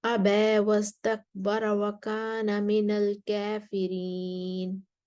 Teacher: اب ورش ابا پر واپس آئیں گے، تقلیل کریں گے اور کافرین پر بھی تقلیل کریں گے۔